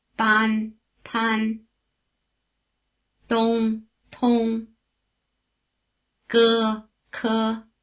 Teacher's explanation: The voicing of the vowel cuts in right after the consonant, with no intervening puff of air. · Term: aspiration